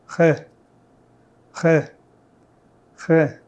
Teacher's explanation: In French the R is pronounced at the back of your throat often with a bit of friction. So as first step I want you to pronounce the letter G.